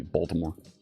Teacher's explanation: Philadelphians like to swallow the L's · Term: Philadelphia accent